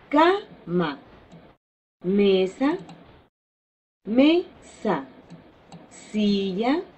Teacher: de ejemplos de palabras graves o lanas que tienen su eh sílaba tónica en la sílaba anterior a la última sílaba o sea en la sílaba penúltima